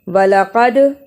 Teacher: قاف کو موٹا پڑھا، دال پہ قلقلہ کیا۔